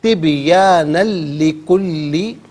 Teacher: اچھا، نون پر 2 زبر کی تنوین ہے، اس سے لکلی کے لام کے ساتھ ملائیں گے، لام کی آواز کو ادا کیا جائے گا، تنوین کا جو ساؤنڈ ہے وہ نہیں ہوگا، لام کی آواز ادا ہوگی